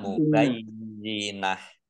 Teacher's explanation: Ini tak marbutoh. Karena di wakof maka dibaca hak, hak sukun. Dibaca mubayyinah.